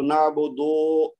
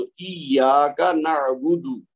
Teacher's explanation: با اور دال دونوں کے اوپر بس پیش ہے تو نعبد لمبا نہیں کرنا، اس کو نعبدو ایسا نہیں پڑھنا، یعنی ایک تو بودو نہیں پڑھنا، بودو، اور دوسرا لمبا نہیں کرنا.